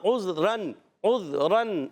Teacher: دیکھیں ناک میں آواز جا رہی ہے